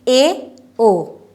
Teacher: मुख द्वार जो है वो आधा खुला आधा बंद है, तो आधा बंद है, अर्ध समवृत्त, ए ओ, ठीक है।